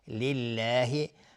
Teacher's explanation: و گفتیم تنوین بعدش لام ادغام بدون غنه و لفظ جلاله ترقیق هست، نازک تلفظ میشه